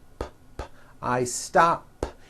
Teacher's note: I stop ends with an unvoiced P.